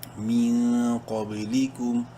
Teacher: قاف board letters میں سے ضرور ہے اس لیے قاف کو منہ بھر کے پڑھیں گے